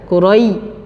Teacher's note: Sempurna betul-betul dari makhraj tengah lidah, Qurai, ya, tengah lidah dengan langit-langit atas. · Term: huruf lin